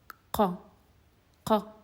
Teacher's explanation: You can feel almost the root of your tongue touching or pressing against the soft palate. And it's very similar to the K sound in English, only that it's a bit deeper. You can feel your tongue pressing hard.